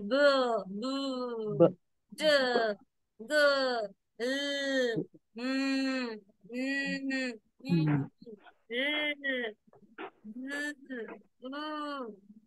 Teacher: So when you say there is no humming sound, k no humming, p no humming, t no humming, th no humming, but when you say b, b, d, g, l, in all these sounds you have this humming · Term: voiced